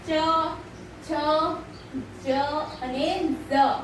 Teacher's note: જ્યારે તમે બોલો છો ત્યારે જીભનો જે મધ્ય ભાગ છે ને વચ્ચેનો ભાગ છે તે તાળવાને સ્પર્શીને જે ધ્વનિ ઉત્પન્ન થાય છે તેને તાલવ્ય વ્યંજન કહેવામાં આવે છે.